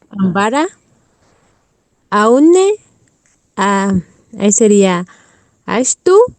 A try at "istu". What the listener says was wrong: no, ahí solo sería, sí, sí está bien, pero aquí en la I es istu, no es ay, istu. Se escribe así y se pronuncia así mismo, istu, y significa enfermo.